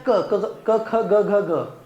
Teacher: क वर्गातली सगळी व्यंजन कुठे येतात कंठ मध्ये येतात